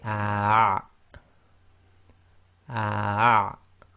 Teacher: you're blocking the middle of your throat when you say the ah, ah. Some people can't actually do that, so just try your best. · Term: ayn